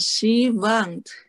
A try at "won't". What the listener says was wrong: You were saying want. That's a whole different word. This is won't with an O. Won't. Won't.